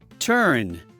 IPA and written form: tɝn (turn)